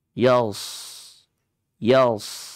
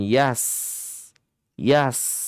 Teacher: kita masuk kepada huruf shad, huruf isti'la dia. Lidahnya kita angkat.